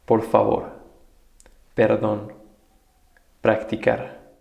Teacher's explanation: Pronounced like the English P without the puff of air.